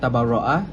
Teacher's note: Yang pertama ialah tabarraa iaitu ra tafkin yang bersifat tebal · Yang pertama ialah tabarra'a, iaitu ra tafkhim yang bersifat tebal. Ini kerana ada bertanda syaddah dan huruf ra berbaris fathah, maka sebutannya perlu ditebalkan